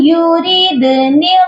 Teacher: یوریدن، یہاں پر دیکھیے حمزہ نون یا زیر نون ساکن کے بعد جب بھی حروف جرمنون کے 4 حروف آتے ہیں تو نون ساکن پر ادغام ہوتا ہے اور وہ بھی غنے کے ساتھ ادغام کیا جاتا ہے، یہاں پر ہم ادغام کریں گے اور غنہ بھی کریں گے